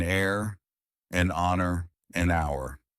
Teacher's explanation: An heir, an honor, an hour. In these cases, the H is silent. So the words begin with vowel sounds and an is used.